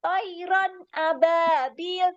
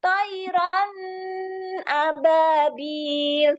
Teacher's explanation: Jelas tidak boleh dibaca dengung ya, tidak boleh dibaca samarsamar. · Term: izhar